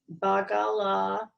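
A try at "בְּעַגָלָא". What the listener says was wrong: Ba'agala. There's an A there. Ba'agala.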